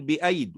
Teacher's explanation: كذلك نقول بأيد وننطق ياء واحدة